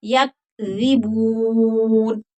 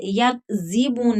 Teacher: یا کذبون نہیں پڑھیں گے یا آواز کو روکنا ہے. یا کذبون ذال کی سیٹی نہیں نکلے گی